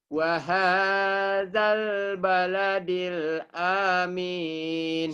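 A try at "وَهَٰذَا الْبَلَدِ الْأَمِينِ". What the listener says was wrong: Salah hanya pendek. Hanya pendek. Amin. Hanya pendek. Panjang dari mana?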